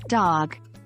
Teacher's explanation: on the following letter D like the D in dog pronounced with the tongue against the upper teeth